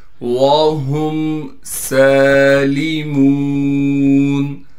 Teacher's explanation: وَهُمْ سَالِمُونَ، ہا کو میم سے ملائیں گے بغیر غننے کے، سین پر کڑا زبر ہونے کی وجہ سے سین کو ایک الف کی مقدار کھینچیں گے اور سین میں سیٹی ادا کریں گے۔